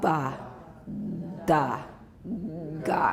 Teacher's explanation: and you got that rumble in your throat. That's the voicing. And so make sure you're not saying mba, nda, nga. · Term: fully voiced stops